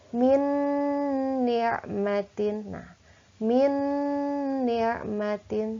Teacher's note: Nun maka ini hukumnya adalah Idgham Bighunnah berarti cara membacanya dileburkan nun sukun tersebut dileburkan dimasukkan kepada Nun yang ada di depannya kemudian digunakan ditahan tidak boleh tergesa-gesa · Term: idgham bi gunnah